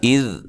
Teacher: یہاں ذال کو ہلائیں گے نہیں، بہت نرم ادا کریں گے، اس کے مخرج سے نکالیں گے ذال